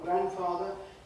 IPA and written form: ˈgrænfɑːðə (grandfather)